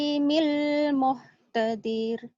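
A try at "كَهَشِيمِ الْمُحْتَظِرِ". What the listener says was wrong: Pendek. Muhtadir. Nggak panjang.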